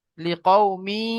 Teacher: লিকাউমি, এখানে কি তানবিনের পরে ইয়া এসছে, ইদগামে ইয়াউমিনের 4টি অক্ষরের মধ্যে ইয়া এসেছে, তো তানবিনের আওয়াজকে নাকে তুলে একালে পরিমাণ গুণনা করে পড়তে হবে।